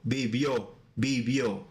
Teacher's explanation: So the stress is in the last vowel. O, vivió, vivió, okay?